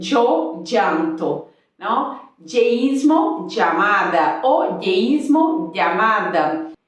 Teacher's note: muitos lugares da América Latina e da Espanha tendem a pronunciar a Y com vogal como a doble L.